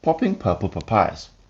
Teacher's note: This helps us check out how the mic handles the burst of air produced by the P sounds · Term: plosive